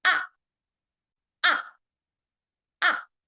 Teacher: The fourth tone, it starts high and then immediately goes down to low